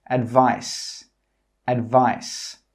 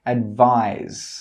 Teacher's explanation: when you make the final sound in this word, your throat must vibrate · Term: Z sound